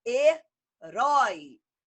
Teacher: O é uma vogal, o I uma semivogal. Ficam juntas. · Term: ditongos abertos